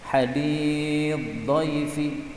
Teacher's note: jadi sa-nya lebur kepada huruf dhad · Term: diidgham